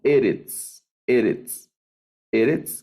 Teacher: Bueno, estas solo tienen dos sílabas y el acento va en la penúltima sílaba.